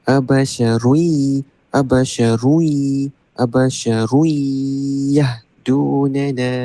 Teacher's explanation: tanwin bertemu ya. Idgham maal ghunnah. So kena baca dia abasyarui mulut kena bukalah. Abarui terus masuk ke dalam huruf ya dan dengung.